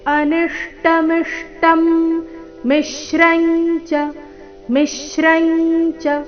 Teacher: ಅನಿಷ್ಟ ನಿ ಮೇಲೆ ಆಘಾತ ಮುಂದೆ ಮಿಷ್ಟಂ ಮಿ ಮೇಲೆ ಆಘಾತ ಇಲ್ಲಿ ನಿ ಮತ್ತೆ ಮಿ ಆದ ನಂತರ ಒಂದೇ ರೀತಿಯ ಸಂಯುಕ್ತ ಅಕ್ಷರ ಬಂದಿದೆ